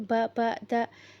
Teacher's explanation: Jadi ini ya, setahu Ana itu dia ketika kita mengucapkan huruf ba sama dal itu, ketika ada kayak hembusan nafasnya itu ba da, itu ini ya identik dengan orang Jawa.